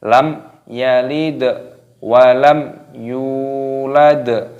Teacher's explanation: Lam yalid, talinya berharokat sukun, maka dimatikan, dibaca yalid dan dikolkolah ataupun dipantulkan suaranya, karena dal ini termasuk huruf kolkolah.